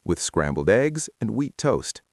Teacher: Notice how the linking words with and and are unstressed.